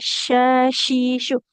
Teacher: Jadi tengah lidahnya menempel ke langit-langit. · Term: huruf shin